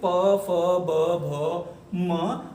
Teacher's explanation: इनको बोलते समय हमारे होठ आपस में टकराते हैं, एक दूसरे को टच करते हैं, इसलिए इनको ओष्ठी कहते हैं